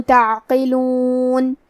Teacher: کثیراً افلم کلمت تعقلون میں عین ساکن ہے تو ہم عین کو ظاہر کریں گے اور حرف القاف کو موٹی آواز میں پڑھیں گے